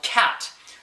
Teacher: when you go C in in cat the C Sound you will feel some air hit your hand